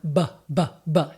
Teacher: But once I turn, I do the same motor planning, bring my lips together, build up air pressure behind my lips, but I have my voice turned on